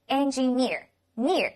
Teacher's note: 它的重音在▁near▁上面